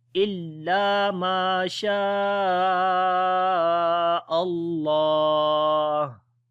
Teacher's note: There is a little sign which is the stop sign. So then when we stop on this ha, then hums quality comes in ha letter